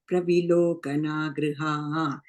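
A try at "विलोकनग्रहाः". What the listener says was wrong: the third line, Vilokana Grahaha. Gra, not Gr. And again, again you're saying Grihaha, you're saying third line. Grahaha. Grahaha.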